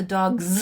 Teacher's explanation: But dog is produced with vocal fold vibration on that last sound.